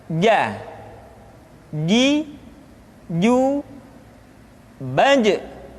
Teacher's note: Dikeluarkan dengan menyentuhkan tengah-tengah lidah dengan langit-langit. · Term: huruf ja